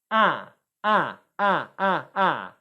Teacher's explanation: Can you see how the tongue is coming forward for ah? It's right behind my front teeth. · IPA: /æ/